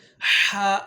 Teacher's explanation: حلق کے درمیانے حصے سے ہا ادا ہوتا ہے. حلق کا یہ وہ درمیانے حصہ ہے جہاں پہ یہ چھوٹی سی ہڈی سی بنی ہوتی ہے شارق کے قریب.